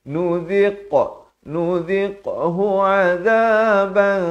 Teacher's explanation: Masuk nudhiq, zal baris kasrah bunyi zi, datang qaf yang bertanda mati kena berikan lantunan.